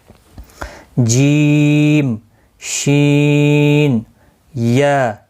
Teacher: زبان کا بیچ اور اس کے مقابل اوپر کا تالو، یعنی زبان کا جو سینٹر والا حصہ ہوتا ہے، یہاں پر آپ دیکھ لیں، یہ زبان کا سینٹر والا حصہ، یہاں پہ جیم، شین اور یا ادا ہوتے ہیں، یہاں سے آپ سینٹر سے ادا ہوتے ہیں۔ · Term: حروف شجریہ